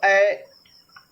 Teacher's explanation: करके उच्चारण देखो, ऐ मतलब कंठ भी आ रहा है और तालु के पास जीभ भी जा रही है। ऐ कंठ पे भी जोर पड़ रहा है और तालु के पास जीभ भी जा रही है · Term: कंठ तालु